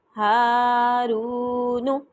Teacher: جتنا میں ہا کو لمبا کر رہی ہوں اتنا ہی میں رو کو لمبا کر رہی ہوں. یہ نہیں کرنا ہا کو زیادہ لمبا کر دینا ہے، رو کو کم.